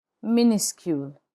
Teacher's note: The final S is not pronounced in minuscule.